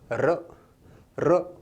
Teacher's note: जीभ लुंठित यानी गोल भी होती है, प्रकंपित यानी कंप कंपाती है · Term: लुंठित या प्रकंपित वर्ण